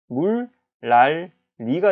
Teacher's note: 그래서 바뀐 게 물, 랄, 리가 되는 거예요. 그러니까 이 비음인 니은은 이 앞에 있는 유음 따라서 덩달아 리을로 바뀌었다